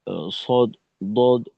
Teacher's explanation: আওয়াজের মাঝে একটা মোটা ভাব রাখতে হবে জিহ্বার গোড়াকে একটু উঁচু করার মাধ্যমে